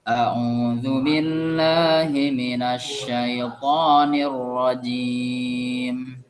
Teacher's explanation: Mimnya mati, tetapi ada terdengar mimnya ada di situ. Biasanya orang membaca a'udzu billahi minasyaitonir rajim, tapi mimnya terasa tidak ada.